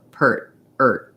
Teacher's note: i go from the r to move my tongue to the t position but i don't let any air out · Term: stop t